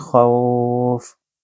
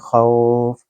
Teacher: यहाँ एक तो खौ आप देखते हैं कि ये लीन का हर्फ है, और उसके बाद फ़ा दो के नीचे दो ज़ेर जो है इसको हम छोड़ देंगे जब इसको इकट्ठा पढ़ेंगे खौफ। तो ये आर्ज़ी एक अलामत हम अपनी तरफ से इस्तेमाल करेंगे और उससे पीछे लीन है, लिहाजा ये होगा मद्द लीन आरिद।